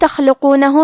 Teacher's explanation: کلمت تخلقونہ میں حرف الخاء ہے، خاء کی ادائیگی حلق کے اوپر والے حصے سے ہے. خاء حروف التفخیم میں سے ہے، تو ہم یہ حرف کو موٹی آواز میں پڑھیں گے